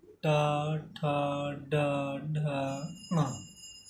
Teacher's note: अब हमारी जिह्वा थोड़ा सा तालु से ऊपर जाके हल्का सा मुड़ के फिर स्पर्श करती है। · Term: मूर्धा